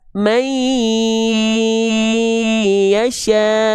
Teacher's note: si lebur konsonan n-nya itu harus disertai dengan dengung. Kalau ada dengung tahan dua harakat. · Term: idgam bigunah, idgham bigunah